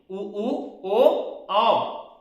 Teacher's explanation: वृत्तमुखी मतलब होंठ का आकार वृत्त के जैसा गोलाकार